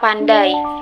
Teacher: Bunyi I pada kata pandai adalah diftong, karena lidah kita berpindah dari vokal A ke I tanpa jeda. Jadi pembacaannya seolah memakai huruf Y, pandai, bukan pandai.